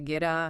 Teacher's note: >> So the T flaps, >> the T becomes a flap T, that soft D sound. And that resulting D sound links smoothly to the article A. So geta becomes ghetto.